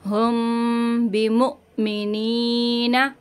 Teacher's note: हमज़ा साकिना को झटका देंगे और या मद्दा को खींचते हुए रुकेंगे।